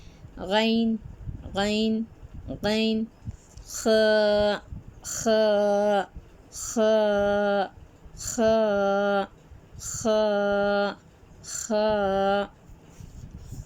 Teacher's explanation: کہاں سے شروعات ہوتی ہے؟ حلق کے ابتدائی حصے سے غین اور خ ادا ہوتے ہیں۔